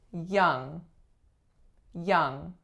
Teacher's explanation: the vowel sound there's only one it's the UH as in up and I usually hear people make it a bit too open